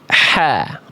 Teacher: Nih hak kecil dilafalkan itu dari tengah tenggorokan ya. Nafas yang mengalir sifat dari huruf H itu karakternya berbisik ya, lembut, bersih atau kayak orang kayak lagi orang kepedesan gitu kan.